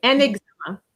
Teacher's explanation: Okay, so you cannot say un examen, it has to be an examen. So the N is going to go with the E to make it flow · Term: liaison